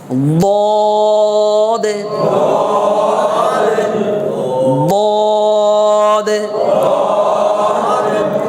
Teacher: যেহেতু মোটা হরফ জিহ্বার গোড়া ফুলে যাবে এবং তালুর সাথে মিশে যাবে ভিতরে একদম গুম গুম আওয়াজ হবে